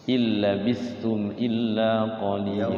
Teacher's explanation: Langsung ilnya langsung ke lam, illa langsung. Idgham bila gunnah masuk ke lam nunnya.